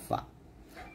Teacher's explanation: ফা টা উপরে দুই দাঁত নিচের ঠোঁটের পেটের সঙ্গে লাগিয়ে ফা টা বাতাস বের করে পাতলা উচ্চারণ করতে হবে